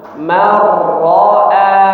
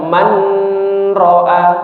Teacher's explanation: Sehingga bunyi nun sukunnya hilang ya, melebur ke huruf setelahnya secara sempurna ya. Bunyi nun sukun atau tanwinnya hilang ya, langsung masuk ke huruf setelahnya secara sempurna tanpa disertai dengung ya. Jadi tidak dipanjangkan, tidak didengungkan ya. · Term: idgham bila gunnah